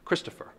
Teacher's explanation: like we'll just say my name aloud Christopher that's a dactyl three syllables the first syllable is emphasized followed by two unstressed syllables